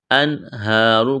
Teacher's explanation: ایک الف کے برابر کھینچنا ہے، را کو موٹا کریں گے